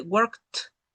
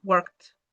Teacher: Como la K es una consonante fuerte, la D suena como si fuera una T.